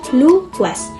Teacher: Diucapkan luas. Bunyi U lemah dan a naik dan juga kuat. · Yang kedua adalah diftong menaik atau rising. Vokal pertama lebih lemah, vokal kedua lebih kuat.